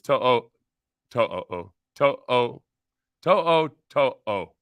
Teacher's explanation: each vowel is pronounced separately. So like if there's an o, it's not oo, it's o.